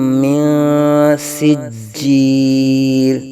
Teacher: نون ساکن کے بعد حروف اخفاء میں سے سین آنے کی وجہ سے یہاں اخفاء کا قاعدہ